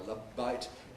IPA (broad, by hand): ˈlʌb baɪt